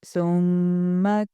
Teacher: جو میم کے اوپر جو شد ہوگا اس کو لمبا کر کے پڑھیں گے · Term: میم مشدد